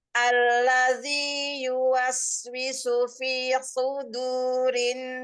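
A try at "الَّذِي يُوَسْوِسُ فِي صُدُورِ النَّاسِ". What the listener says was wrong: cukupkan kadar ee mad thobi'i pada f-nya, Bunda. Kemudian sh ee shnya tebal.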